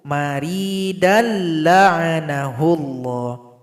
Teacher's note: idgham bila gunnah maka cukup kita lebur kalau kita gabung tanpa didengungkan